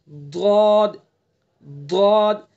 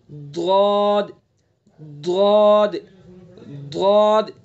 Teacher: تو بائیں طرف سے ادا کریں، ضاد ضاد، زبان کی کروٹ کو ڈاڑ پہ لگائیں گے، اور جو تالو ہے اس کو، جو پچھلا حصہ ہے تالو سے چمٹا دیں گے تو یہ پر ہو جائے گا۔ کس طرح سے؟ ضاد ضاد ضاد۔